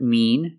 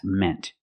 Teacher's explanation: in the present mean use the long e sound like green beans and in the past meant use the short e sound like 10 and red